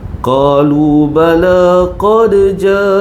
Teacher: mad wajib muttasil. Empat, lima atau enam harakat. Panjang.